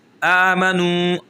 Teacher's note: آ کو کھینچیں گے کیونکہ کھڑی حرکات ہے، کھڑی زبر کھڑی زیر الٹا پیش آئے تب بھی ہم ایک الف کے برابر کھینچتے ہیں، وہی قاعدہ لگے گا جو حروف مدہ کے اندر ہے۔